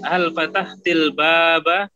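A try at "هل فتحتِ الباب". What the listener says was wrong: Ahsan.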